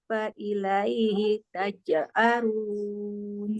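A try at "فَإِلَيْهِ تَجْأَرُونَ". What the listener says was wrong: Nah, hurufnya jangan di ini. Jangan kayak ada jeda. Jadinya kayak panjang. Durru fa ilaihi. Massakumud durru fa ilaihi.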